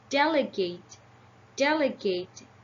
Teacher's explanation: the first syllable get the primary stress and the third syllable get the secondary stressed